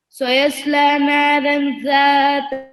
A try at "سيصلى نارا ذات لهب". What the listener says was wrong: را کو موٹا پڑھے. نارن. سیصلی نارن.